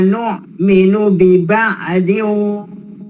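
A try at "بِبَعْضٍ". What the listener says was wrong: ainnya jangan ada mantul ya. Biba'diu ban biba'diu lah.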